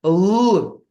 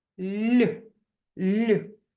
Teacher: а в слові ліс приголосний звук ль вимовляється лагідно м'яко тверді приголосні вони вимовляються серйозним ротиком стуленими губками і ми ми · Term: М'який приголосний